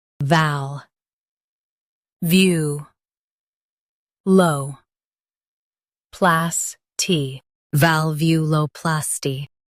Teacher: Stress view and keep plas light.